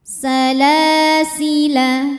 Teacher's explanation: La mad tabi'i muqaddar sebab lam berharokat fathah panjang. Cara bacanya dipanjangkan lamnya 2 harokat.